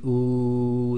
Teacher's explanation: when you say ooh the back of your tongue goes up and your lips make a nice little round circle